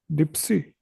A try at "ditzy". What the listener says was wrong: See the spelling. Ditzy. You're saying per. You're using a P. Ditzy. According to the spelling, speak it. Just that in place of a Z or a Z, say S.